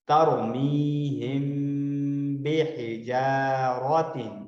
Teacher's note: ناک کی طرف سے آپ کی آواز چھپ کے آتی ہے، سامنے منہ سے ڈائریکٹ آواز نہیں آ رہی ہوتی بلکہ ناک کی سائڈ سے چھپ کر آ رہی ہوتی ہے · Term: اخفا